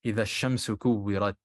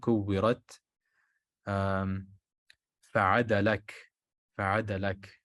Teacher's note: They are not voiced, they are aspirated, so the hams serves as the qalqala for kaf and ta. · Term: aspiration at the end